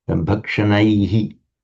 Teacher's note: We have this shadow vowel, Buddha, Guruhu, Munihi, where you have the shadow vowel is pronounced after the visarga. When you have the diphthong I, the shadow vowel is a very short E.